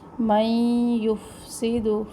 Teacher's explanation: نون ساکن کے بعد یا، دونوں آوازوں کو ملائیں گے. من یفسد، اصل میں ملانے والے اس میں میم کو یا سے ملانا ہے اور نون اس میں سائلنٹ ہو جائے گا.